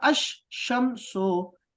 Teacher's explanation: الف لام کا لام لکھا تو جاتا ہے لیکن پڑھا نہیں جائے گا · الف لام کی آواز لفظ کے پہلے حرف کی آواز میں بدل جاتی ہے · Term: حروف شمسی